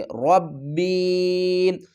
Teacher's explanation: یا ساکن سے پہلے زیر ہے تو اس کو ہم ایک الف کی مقدار کھینچ کر پڑھیں گے، ربی۔ تشدید والے حرف کے اوپر ہم تھوڑی سی سختی بھی کریں گے، ربی۔